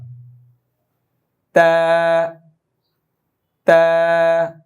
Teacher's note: জিব্বার আগা দাঁতের গোড়া, সামনের দুই দাঁতের গোড়া